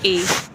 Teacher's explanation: ए के उच्चारण में कंठ और तालु की सहायता ली जाती है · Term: कंठ तालु